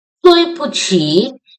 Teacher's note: How we will pronounce 对 in four tone, 不 in neutral tone, 起 in third tone.